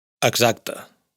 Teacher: el sonido S de X se ha sonorizado al estar entre vocales